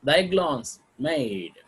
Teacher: Thy is not accented, glance is accented.